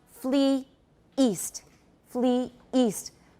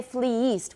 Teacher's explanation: two syllables and second it's got that glottal stop in between we don't usually say fleeced we